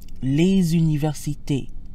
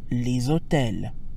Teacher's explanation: So we have les téléphones, les cartes, les universités, les hôtels, les haricots. Notice how les sounds when followed by a vowel, as in les universités. The usually silent S sounds like a Z. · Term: liaison